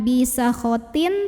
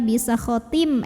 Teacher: Karena ada tanwin kasrah yang bertemu dengan huruf mim. Maka tanwin kasrah ini dileburkan ke mim, masukin ke mim, disertai dengungan. Jadi ini bukan bisa khotin tapi bisa khotim M dan tahan bunyi M-nya ya. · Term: idgham bi gunnah